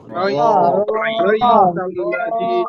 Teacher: রর উপরে জবর বা পেশ হলে মোটা আওয়াজে পড়তে হয়